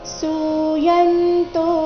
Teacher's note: ಸು ದೀರ್ಘ ಬರಬೇಕು ಕೊನೆಯ ತೋ ದೀರ್ಘ ಬರಬೇಕು